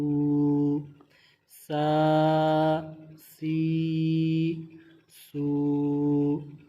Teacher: سین میں سیٹی کی آواز واضح کریں گے